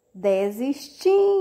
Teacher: geralmente é pronunciada esse ó com sonzinho da letra U mas é escrito com a letra o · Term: som de u